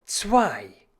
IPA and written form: t͡svaɪ̯ (zwei)